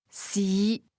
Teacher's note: Fifth tone low rising